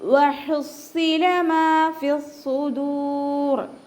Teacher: വാവൊന്ന് ഉച്ചരിക്കുമ്പോൾ ചുണ്ടുകളൊന്ന് സർക്കിൾ ചെയ്ത് കൊടുക്കുക. ഹ തൊണ്ടയുടെ മധ്യഭാഗം വസത്തുൽ ഹൽക്ക്, സൗണ്ട് ക്ലിയർ ആക്കി കൊടുക്കുക.